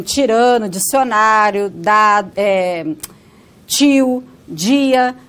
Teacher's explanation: O tchá e o já, como em tirano, dicionário, tio, dia, né? Esse tchá e o já, ele só vai aparecer antes de uma vogal I, antes da vogal I. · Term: alofone